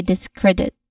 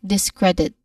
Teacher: say discredit focusing clearly on cred. So that's the stress syllable